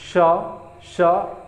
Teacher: ये जो बड़ा स है ये तालु से बोला जाता है सर, तालु से, इसको तालु से बोला जाता है, तालु, यानी कि तालव्य है, ये तालव्य स है।